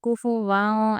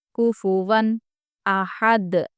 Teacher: کوفو ون، कुफुवन ऐसे नहीं रुकेंगे, कुफुवां ऐसा इख्फा भी नहीं करेंगे, हम इजहार करेंगे यानी कि नून की आवाज़ को ज़ाहिर कर देंगे। कुफुवन अहद, देखिए यहाँ पर भी हम वक्फ कर रहे हैं, इसलिए जज़म देकर सांस छोड़ने की वजह से ये दाल कलकला हो जाएगा, कलकला का हर्फ हो जाएगा, इसलिए यहाँ पर भी हम कलकला करेंगे।